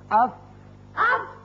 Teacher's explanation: نچلے ہونٹ کے اندرلے حصے سے لگتے ہیں تو فا ادا ہوتا ہے، اف. واو غیر مدہ، کیونکہ مدہ جو ہے وہ خلائے دہن کی ہوا سے نکلتا ہے.